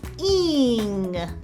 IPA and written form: iŋ (ING)